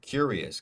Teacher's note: first syllable stressed